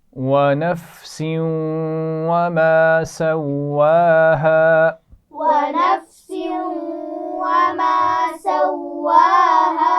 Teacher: نفس تنوین کے بعد واو ہے تو ملائیں گے بھی اور غنہ بھی کریں گے